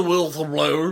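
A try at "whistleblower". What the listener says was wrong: you pronounced the L and wh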